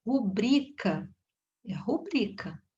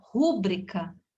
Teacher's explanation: A sílaba tônica é aqui, bri. Então, ela é uma palavra paroxítona.